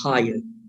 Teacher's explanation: in British English, they do not pronounce the final R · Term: rhoticity